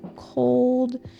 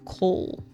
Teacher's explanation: The common Vietnamese mispronunciation is leaving out the D on the end. For example, when saying cold, it is mispronounced coal. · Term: LD old sound